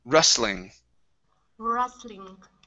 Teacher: so here the T is silent, and we're going to say ru instead of ru.